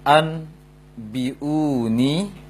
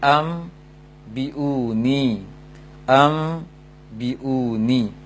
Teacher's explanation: Merubah bunyi nun sukun menjadi mim jika bertemu dengan ba. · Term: iqlab